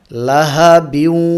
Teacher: গুন্নাটা বাকি রয়ে গেছে আমরা লাহাবিউ এভাবে পড়বো গুন্না করার সময় গুন্না করার জন্য নাকে আওয়াজ আনবো একই সাথে মুখের আওয়াজও থাকবে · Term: ইদগামে নাকিস